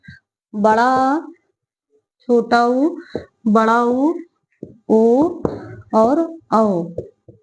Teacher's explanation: वे स्वर जिनके उच्चारण में जिह्वा का पश्च भाग प्रयुक्त होता है, तो उसे हम कहते हैं पश्च स्वर।